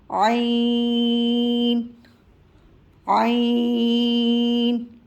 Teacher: اس میں ذرا دباؤ ڈالیں گے درمیانے حلق پر. دباؤ آپ اپنی انگلی کے ذریعے بھی حلق پہ درمیانے حلق کو اگر آپ اپنی انگلی سے دبائیں گے تو تھوڑا سا دباؤ آئے گا اور عین کی ادائیگی ہوگی.